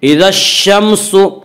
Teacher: اذا الشمس كورت، الف لام اگر حروف شمسی کے شروع میں ہوں تو الف اور لام کو نہ پڑھیں گے بلکہ بعد والے حرف سے ملا کر پڑھیں گے، اور شین حروف شمسی میں سے ہے، شین سے پہلے الف اور لام آ رہے ہیں، اس لیے الف اور لام کو نہ پڑھیں گے بلکہ بعد والے حرف سے ملا کر پڑھیں گے۔